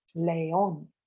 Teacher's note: That's why this is a two-syllable word, león. However, the word is pronounced as an aguda word with the stress on the last syllable